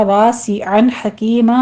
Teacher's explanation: عین کی آواز وسط حلق سے نکالیے